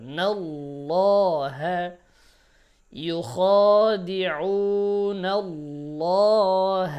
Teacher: আল্লাহ শব্দের লাম মোটা হবে